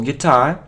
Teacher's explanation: So the stress is on the second syllable, guitar.